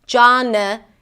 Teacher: And then 'nuh' - and N sound and a schwa - not an 'aa' sound, but just a really reduced sound